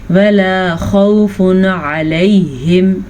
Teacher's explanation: یہاں پہ ہے ہمارے پاس تنوین، تنوین کے بعد عین آ گیا ہے جو کہ حروف ہلکی میں سے ہے تو ہم تنوین کو ظاہر کر کے بغیر غننے کے پڑھیں گے